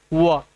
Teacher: व का उच्चारण स्थान आपका दंतोष्ठ अर्थात इसके उच्चारण में दांत तथा ओठ दोनों का उपसहयोग होता है